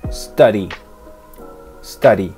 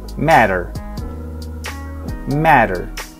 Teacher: Cuando una T o una D está entre medio de dos vocales en una palabra en inglés y ninguna de las dos sílabas se acentúa, esa T se cambia por el sonido de una R en español. Ejemplo, study, en inglés americano se pronuncia study, study, con el sonido ari, ari, como si tuviera una R en medio.